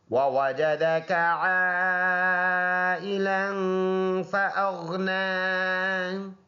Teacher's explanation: غین کو ساتھ ملائیں گے، غین ان حروف میں سے ہے جو منہ بھر کر پڑھا جاتا ہے۔ نون پر کڑی زبر ہے، ایک الف کے انداز سے اس کو لمبا ادا کریں گے